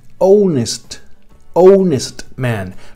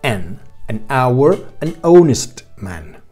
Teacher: no estoy pronunciando la H. Entonces, ¿qué pasa si yo esa H no la estoy pronunciando?